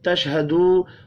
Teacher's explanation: واو مدہ کو ایک الف کے برابر کھینچ کر پڑھیں گے